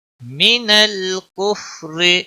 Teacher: کفر را کو باریک پڑھیں گے